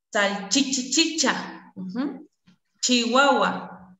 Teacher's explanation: también tenemos palatales sordas